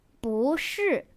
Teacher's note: is normally in the fourth tone, but becomes 不, the second tone, when used with the word 是, which is in the fourth tone